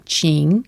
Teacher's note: It's the cup pronunciation, falling then rising